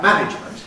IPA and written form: ˈmænɪʤmənt (management)